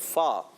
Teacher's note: फ़ा जब अदा होता है, याद रखिए फ़ा की अदायगी होती है ऊपर के जो दांत होते हैं, सना या उलिया, ऊपर वाले दांत जब नीचे वाले होंठ के तर हिस्से से, गीले हिस्से से लगते हैं तो ये फ़ा अदा होता है